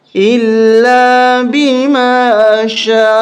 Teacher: اس کو زیادہ ہی کھینچیں گے اس لیے کہ اس کے اوپر بڑی مد ہے، 5 الف تک کھینچیں گے ، الا بما شاء، یہاں ہم وقف کریں گے تو شاء